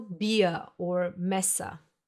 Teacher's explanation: The second type of the letter R in German is the one that sounds like a reduced A sound. You will find it mostly in words ending in ER or A, as you would pronounce it.